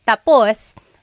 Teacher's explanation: when the emphasis is at the end, tapus, that means finished